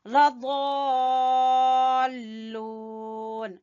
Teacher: یہ مد لازم ہے، اس کی مقدار طول ہے اور اس کو 4 سے 5 الف کے برابر کھینچیں گے